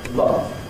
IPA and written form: lʌv (love)